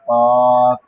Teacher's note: জিহ্বার গোড়া, তার বরাবর উপরে তালুর সঙ্গে লাগাইয়া তার বরাবর উপরে তালুর সঙ্গে লাগাইয়া 2 নুক্তাওয়ালা কফ।